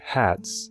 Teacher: in the word hats it shows up as an S sound and not as a z sound